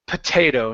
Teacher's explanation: here we want to stress the a sound instead of saying potato it's potato and so the first o